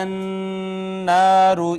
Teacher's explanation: را کو مفخم پر کر کے پڑھیں گے